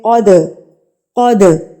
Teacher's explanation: دال سکون کی علامت ہے دال کے اوپر، اس لیے ہم اس پر قلقلہ کریں گے، تو ہم اس کو ہلا کے پڑھیں گے